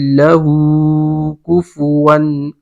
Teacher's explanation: ہو الٹا پیش ہے تو واو مدہ ہوگا یہاں پہ، یعنی کہ ایک الف کے برابر کھینچ کر پڑھیں گے